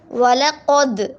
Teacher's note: وَلَقَدْ، واو کو جو ہے نا موٹا پڑھیں گے، وَلَقَدْ، ٹھیک ہے، قوف کو موٹا پڑھیں گے، اور دال جو ہے وہ قلقلہ کا حرف ہے۔